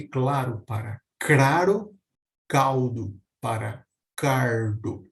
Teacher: uso desse R retroflexo do Erre caipira é um fenômeno natural no fenômeno de variação linguística mas que apesar disso geralmente acaba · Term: R caipira